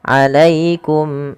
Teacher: ya sukun bila didahului fathah maka ia bacaan lin lembut di dalam pelafalannya